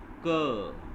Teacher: क, आप क बोलेंगे तो आप देखेंगे कि आपके मुंह से हवा बाहर निकलेगी और आपके ऊपर मुंह के ऊपरी हिस्से को तालू को टच करते हुए बाहर आएगी। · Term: स्पर्श व्यंजन